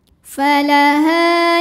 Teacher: ada Alif didahului baris fathah maka dibaca h-nya panjang dua harakat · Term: Mad Thobi'i